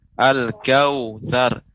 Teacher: Waw sukun sebelumnya fathah ya. Ini termasuk sifat lin.